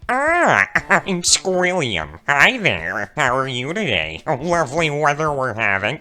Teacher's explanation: his vocal cords are compressed, squished down.